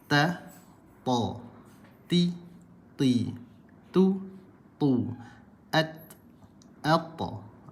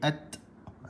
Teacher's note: Huruf ta macam mana tebal dia, macam mana huruf ta bila sukun dia tidak ada terpantul suara. Okey, dia ada angin sedikit